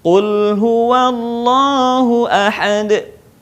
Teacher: tidak konsisten dengan mad asli yang seharusnya 2 harokat